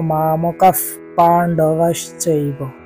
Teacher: অর্থাৎ এখানে বিসর্গের স্থলে আমরা ফ উচ্চারণ করব কারণ বিসর্গের পরের বর্ণটি প তাই প এর পরের বর্ণ ফ